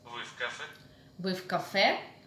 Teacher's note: General question, rising intonation.